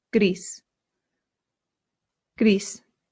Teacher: in Spanish, you have to slightly round that R.